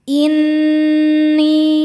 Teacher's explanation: Nun hukumnya gunnah musyaddadah karena nun bertasydid. Cara bacanya berdengung, tahan dengungannya kurang lebih 2 harokat. Inni. Ni mad tabi'i dhahiri karena ada ya sukun sebelumnya baris kasrah.